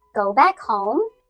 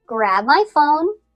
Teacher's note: before each comma, the inflection stays raised and you lower your inflection only at the end of the sentence. And this makes it really clear that you are listing things.